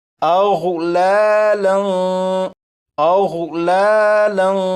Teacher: اس لفظ میں غین ہے، غین کو پر یعنی موٹا پڑھیں گے۔ لام کے اوپر 2 زبر ہیں یعنی تنوین ہے، تنوین کے بعد فا ہے۔